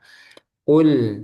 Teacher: Di lisan paling belakang. Lidah bagian belakang menimpel pada langit-langit ee yang lunak. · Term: qof